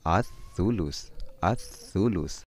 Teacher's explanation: Jadi ada huruf alif lam bertemu dengan huruf tha, lamnya tidak jelas atau dilebur